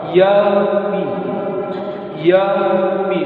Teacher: Maliki Yaumiddin. Di sini perhatikan wawu yang menjadi huruf lin karena sebelumnya berharokat fathah